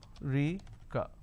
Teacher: So there are 4 syllables, America. Now in northern part of the country, they pronounce this as Rica. So they drop a syllable.